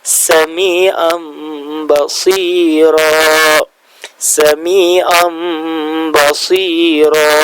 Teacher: Huruf nunnya itu hilang seakan-akan berubah menjadi huruf mim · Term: iqlab